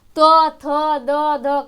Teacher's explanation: त थ द ध कहां से बोला जाता है दंत से बोला जाता है